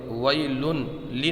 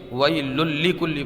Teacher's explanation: ویل لی نہیں پڑھیں گے بلکہ ویل لکل پڑھیں گے، ویل لکل، لیکن یہاں پر ادغام ہوگا بغیر گننے والا